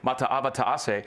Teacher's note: I was trained to kind of make sure I hit all the glottal stops